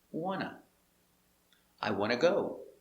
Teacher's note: Because NT, between two vowels, the T is muted.